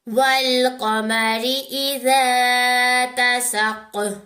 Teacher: काफ को मोटा और कलकला दोनों करेंगे।